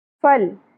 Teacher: لام ساکن پہ قلقلہ نہیں ہونا چاہیے